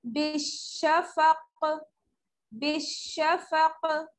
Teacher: अगर हम आयत पर ठहरने की वजह से काफ को साकिन कर देंगे तो यहाँ क्या होगा, कलकला